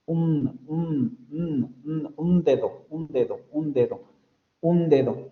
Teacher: en lugar de pronunciar la n en los alveolos en los hablantes del español la pronuncian con la lengua en los dientes